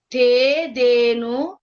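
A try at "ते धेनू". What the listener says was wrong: ధేను అనూకు దీర్ఘం చెప్పండి. ధేను ధేను అంటే ద్వివచనం కదా. ద్వివచనం ఎప్పుడు దీర్ఘం వస్తుంది చెప్పాం కదా.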